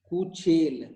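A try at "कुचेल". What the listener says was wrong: You are cutting the last vowel. Why? It's not Hindi. This is as it is to be read. Kuchela. Kuchela. Not Kuchel.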